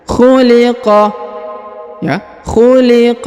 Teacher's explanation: ditahan dan ditekan karena terdapat tanda tasdid ya mimma khuliqo kemudian huruf Kaf diujung dipantulkan atau diqalqolahkan